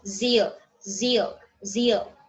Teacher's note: the blade of a tongue is used just behind the alveolar ridge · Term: Palatal alveolar